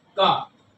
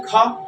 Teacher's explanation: क बोलने पर कम वायु निकलती है और ख बोलने पर ज्यादा निकलती है